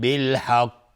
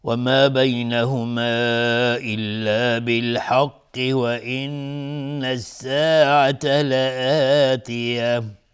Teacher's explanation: اینجا اگر ما توقف بکنیم روی حق اینجا قلقله میخواد، میگیم بالحق، اینجا قلقله میخواد چون ساکنش کردیم.